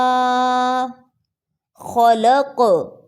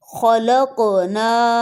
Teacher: قاف موٹا بھی ہے اور کلکلا بھی ہے